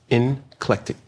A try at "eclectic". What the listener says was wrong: there's no N in it.